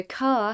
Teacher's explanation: In other accents, it is pronounced everywhere. In Standard British English, r is pronounced only before a vowel. So, car has no r sound.